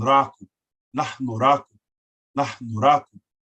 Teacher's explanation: Aspirant H, nahnu, and a rolled R, a softly rolled R